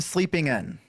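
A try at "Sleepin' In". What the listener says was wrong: Yeah, there's no G.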